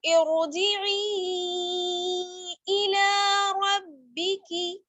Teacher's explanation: यहाँ पर मद्दे मुनफसिल होगा, 4 अलिफ के बराबर हम इसको खींचेंगे ई को